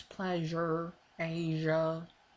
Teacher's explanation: Ja is a voiced version of sha